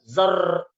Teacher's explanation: Pengucapan ro itu dikasih bulat sedikit mulut. Zau jangan terlalu digetarkan.